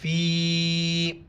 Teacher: مد ہے، 4 الف کی مقدار کھینچیں گے